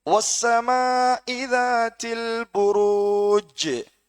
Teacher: புரூஜ் இந்த ஜீமை நாங்க அழுத்தி நிறுத்தணும். புரூஜி என்று இருக்கி, ஆனா சுக்குன் செஞ்சு நிறுத்துவோம் வசனத்தினுடைய இறுதியில். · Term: கல்கலா குப்ரா